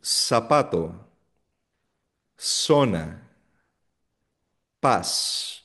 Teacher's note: Hindi siya zapato. Walang Z sound sa Spanish. So S yan.